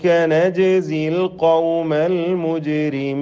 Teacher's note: നജ്സി എന്നതിലെ അതുപോലെ തന്നെ അൽ മുജിരിമീൻ, ഈ രണ്ട് പദങ്ങളിലെയും സാക്കിനായ ജീമിൻ്റെ സുക്കൂനിനെ ഖൽഖല നൽകി ശബ്ദം ചലിപ്പിച്ച് വ്യക്തമാക്കി ഹറക്കത്ത് പോലെ ഉച്ചരിക്കേണ്ടതാകുന്നു